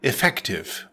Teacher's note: Effective is an adjective pronounced effective with the stress on the second syllable.